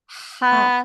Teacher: ucapin huruf H yang kecil yang sama makhraj dengan huruf ain